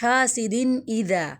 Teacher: تنوین کے بعد حمزہ آ رہا ہے، حاسدین ایذا، تو یہاں پر اظہار ہوگا. ذال کو نرمی سے پڑھیں گے اور الف مدہ.